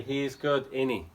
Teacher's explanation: We take out the S and the T.